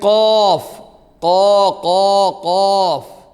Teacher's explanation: മേലെ അണ്ണാക്കിലേക്ക് ഏയ് മേലെ അണ്ണാക്കിലേക്ക് തട്ടിയിട്ട് അകലുമ്പോൾ ആണ് ശബ്ദം ഉണ്ടാകുന്നത് ഏയ് നാവിന്റെ മുരട് മേലെ അണ്ണാക്കിലേക്ക് തട്ടുമ്പോഴല്ല തട്ടിയിട്ട് അകലുമ്പോൾ